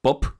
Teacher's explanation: esa última P es una P que sale con aire en vez de una vocal. Entonces el pre debería colocarse después de la aplosión y a la derecha del pre haría un poquito de aire.